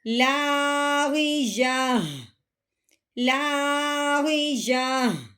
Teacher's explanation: گول تا کا مطلب کیا ہوتا ہے کہ جب ہم تا پڑھیں گے، جو اس کے اوپر 2 زبر لگی ہوئی ہیں، اس کا نام تنوین ہے، جب ہم تا کے اوپر تنوین ملاتے ہوئے پڑھیں گے تب تو ہم نے نکالنی ہے تا کی آواز، ٹھیک ہے؟ اور جب ہم وقف کریں گے تب ہم نے تا کو ہٹا دینا ہے، تو پیچھے ہا کی آواز نکالنی ہے، وہ بھی ساکن کرتے ہوئے، کیونکہ وقف کی صورت میں جو آخر والا حرف ہوتا ہے اس کو ساکن کرتے ہیں، اب آخر والا حرف پیچھے ہا رہ جائے گا تو اس کی اپنے آواز ساکن کرتے ہوئے نکالنی ہے۔